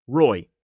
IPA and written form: rɔɪ (Roy)